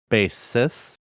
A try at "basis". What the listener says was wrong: You said basist like they play the bass basist.